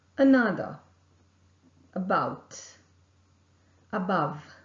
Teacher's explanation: the center part of the tongue is raised it is raised to a point between half close and half open position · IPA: /∂/